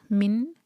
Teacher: فریقم من، نون پر سکون ہے تو نون پر اظہار ہوگا، نون ساکن کے بعد ہا رہی ہے، کلیئر پڑھیں گے نون کو